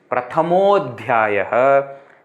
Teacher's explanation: Visarga becomes u, then a plus u becomes o, and then that next a is dropped. So you see, prathamodhyayah is actually prathamaha adhyayah.